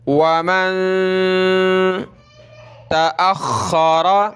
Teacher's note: नून साकिन है, नाक में आवाज़ पैदा करेंगे